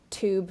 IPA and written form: tuːb (Tube)